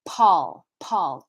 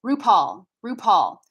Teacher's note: in english the name paul is going to have a puff of aspiration